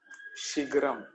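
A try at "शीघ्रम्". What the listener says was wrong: Shighram. It's a gha. Shighram.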